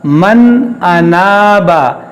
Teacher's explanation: نون ساکن کے بعد حمزہ ہے تو یہاں پر اظہار ہوگا, یعنی یہاں پر غنہ نہیں ہوگا